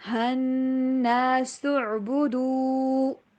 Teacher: نون کے اوپر غنہ کرنا ہے، سین کی آواز سیدھی والی، سین کی آواز کو عین کے ساتھ ملائیں گے، سعبدو۔